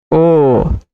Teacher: ओ का उच्चारण स्थान कंठोष्ठ, कंठ और ओष्ठ जुड़ गया कंठोष्ठ